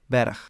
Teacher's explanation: at the end of words it was devoiced, just like all consonants in final position in Old Frisian, and the G here sounds like a ch